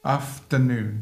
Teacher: Vous avez un accent tonique primaire, ici il tombe sur la fin, afternoon. Mais comme il est un peu long, un peu pour le soutenir, sinon il pourrait s'affaisser sous son propre poids, vous avez un accent tonique secondaire.